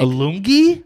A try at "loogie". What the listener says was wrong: A loongie. Loogie? I put an N?